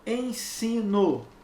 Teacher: É como se eu tivesse o E nasalizado.